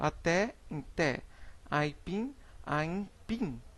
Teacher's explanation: Na letra I nós temos transformação por nasalação, que é o nome dado à transformação de fonema oral a um fonema nasal